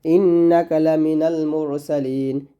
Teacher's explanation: নুন গিয়ে লাম করতে হবে, নুন লাম জবর নাল